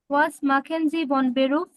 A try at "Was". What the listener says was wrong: ওয়াজ না, ভাস। ভাস। দেখেন আমি বলি, ডাব্লিউটা যদি ফার্স্ট পজিশনে থাকে তাহলে ভির মতো উচ্চারণ হয়, ভি।